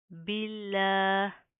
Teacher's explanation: इसमें जलाला के लाम बारीक पढ़े जाएंगे